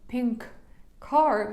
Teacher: Щоб ми нібито не робили ось цю паузу, ми з'єднуємо ці з вами слова. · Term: принцип лінкування